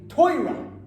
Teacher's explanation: Ashkenazi impact on Hebrew takes the Yiddishization of Hebrew. Basically, it puts the accent on the front syllable.